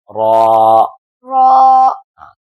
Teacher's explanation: را، را ایسے، را، یہ تکرار سے ادا ہوتا ہے، اس میں تکرار ہے، یہ زیادہ اس کی پریکٹس کے لیے استعمال کرتے ہیں قراء۔ زبان کی نوک اور مقابل کے تالو سے ادا ہوتا ہے۔ ان کو حروف طرفیہ کہتے ہیں، طرفیہ میں سے را ہے، حروف طرفیہ میں سے را ہے۔